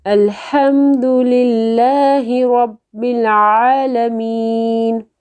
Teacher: ہا جو ہے وہ گلے کے درمیان میں سے ادا ہوتا ہے